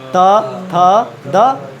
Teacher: त थ द सब दांत सट रहा है